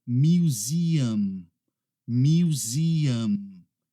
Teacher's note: Como essa palavra termina com M, a gente precisa fechar os nossos lábios ao final.